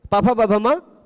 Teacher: ठीक है, पफ बभमा, पांचों का उच्चारण स्थान ओष्ठ और पांचों का आभ्यंतर प्रयत्न स्पृष्ट